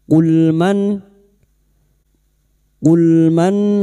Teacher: nun sukun dibaca jelas tanpa mendengung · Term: idhar halq